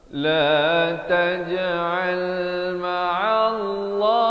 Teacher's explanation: Lafaz jalalah dibaca tebal di sini.